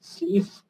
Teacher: Да, слив и слива тоже не подходят, потому что слив буква В на конце, но звук Ф